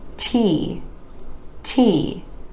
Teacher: You want to make sure that there's a tiny puff of air releasing with the T in T, T, or else it might sound more like D, D. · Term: air puff sound